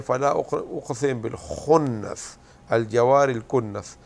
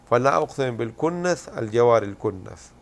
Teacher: وہ پھر خا کو کاف کہتے ہیں